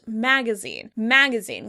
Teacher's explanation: in American English it's generally pronounced magazine, magazine, with stress on that first syllable